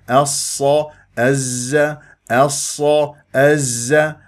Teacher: يجري فيها صوت لا يجري فيها النفس احرص على الرخاوه وليست مهموسه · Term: احرف الصفير